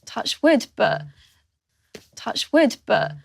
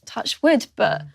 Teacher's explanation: The result is that there isn't any clear vowel sound in this word. Instead, we hear a b consonant, followed by a moment of vocal fry.